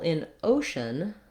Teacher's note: in ocean, we have a schwa for the letters EA